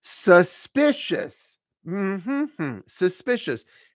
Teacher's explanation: it's a three- syllable word stress on the second syllable